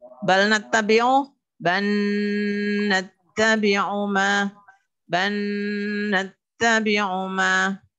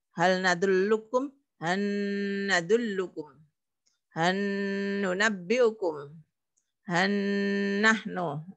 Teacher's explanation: ketika lamnya bal ketemu dengan nun, itu seolah-olah nunnya bertasydid. Nunnya bertasydid. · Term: Gunnah